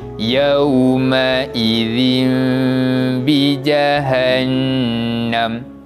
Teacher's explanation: Menjadi bacaan iqlab yang perlu digantikan bacaan tanwin tersebut pada huruf mim dan dibaca dengan bacaan dengung